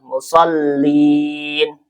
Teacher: Nah, musallin ini lamnya ada tasdid. Maka seperti membaca dua lam.